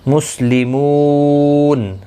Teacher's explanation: مو واو مدہ ہے، ایک الف کی مقدار کے برابر کھینچ کر پڑھیں گے، اور وقف کی صورت میں نون ساکن پڑھا جائے گا، وقف بالاسکان ہوگا، مد العارض وقفی ہوگا، 3 سے 5 الف یا 3 سے 5 سیکنڈ کھینچ کر وقف کریں گے، وقف بالاسکان ہوگا۔